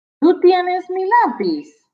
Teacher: All you need to do is say it with a rising intonation at the end.